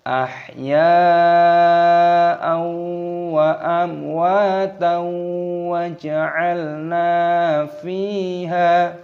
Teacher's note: Karena di sini ada fathah tanwin yang bertemu dengan wawu. Hukumnya dibaca idgham bi gunnah, dimasukkan dan disertai berdengung.